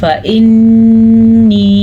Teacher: नून के ऊपर शद है तो ये नून गुन्ना हम ज़रूर अदा करेंगे।